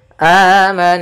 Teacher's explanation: suara nunnya kita tahan dulu suara n-nya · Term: gunah